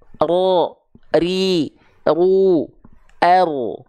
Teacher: Jadi huruf ra itu bergetar tapi sedikit saja mungkin hanya satu sampai dua getaran saja tapi tetap tegas lugas dan jelas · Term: huruf ro